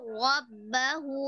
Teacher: Ada ro sukun dan ro fathah. Ro sukun sebelumnya dhammah, maka dibaca tebal. Kemudian ro fathah juga dibaca tebal.